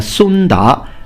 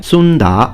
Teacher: That's first tone, second tone, by the way, Sunda in Mandarin Chinese